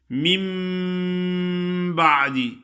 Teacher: میم نون ساکن کے بعد با کا حرف آ گیا ہے، تو اس واسطے اس کو نون کو میم سے بدل کر پڑھتے ہیں. من بعد، اس کو اقلاب کہتے ہیں.